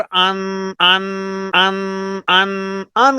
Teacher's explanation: अन के बाद जो आवाज लंबी और ना की तरफ जा रही है ये इस वजह की जहाँ नून साकिन होता है वहाँ इख्फा होता है। हमजा नून जबर अन नहीं पढ़ना।